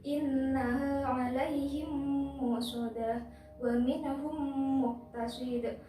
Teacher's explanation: jika ada mim sukun bertemu dengan huruf mim dan cara membacanya adalah dengung sepanjang dua harokat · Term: idgham mimi